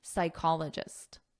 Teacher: so there's no P in the pronunciation, psychologist.